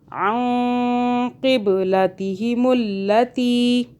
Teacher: نون کو چھپانا ہے، زبان تعال سے ٹچ نہیں کرنی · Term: اخفا